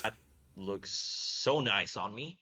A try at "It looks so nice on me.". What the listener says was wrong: It looks so nice on me. There's a lot of that like emphatic pronunciation, and we want some of it, but we don't want it everywhere. And I think maybe it's being overdone a little bit.